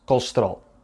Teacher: the unstressed vowels were reduced to the point of disappearing, and the unstressed syllables were shortened. The word has 4 syllables, colesterol, but we really only hear 2, colesterol. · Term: vowel reduction